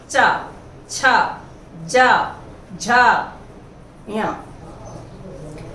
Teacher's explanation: तालु के पास मसूड़े से, देखिए जब उच्चारण करेंगे हम तो मसूड़े के हमारी जीभ जाके टच होती है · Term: च वर्ग